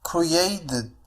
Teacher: فهنا أيضا T سوف تنطق على الشكل flap T على الشكل D لأنها تأتي بين two vowels